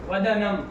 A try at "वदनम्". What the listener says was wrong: वंदनम बोला तुमने, पागल तरीका। अरे शुद्ध उच्चारण था इसलिए टोके, पागल हो हैं? शरद इंदु की तरह कौन भैया, किसको उपमा दी जा रही? शरद इंदु की को दी जा रही है, तो कौन उपमेय हुआ? वदन हुआ। तो तुम तो क्या मदयति फदयति करने लगे हैं?